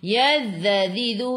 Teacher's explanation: Hujung lidah keluar pada gigi depan. Tahan. Jangan melantun huruf zal.